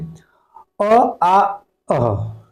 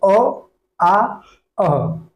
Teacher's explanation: कंठ से हम लोग बोलेंगे अ आ अह